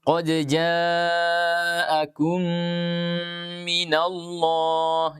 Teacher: Itu bila ada nun atau ada mim bertasydid. Di sini ada mim bertasydid maka diberikan gunnah akmal, ya, gunnah sempurna